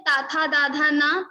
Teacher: Dantya, your tongue will touch your teeth. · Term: Dantya Varna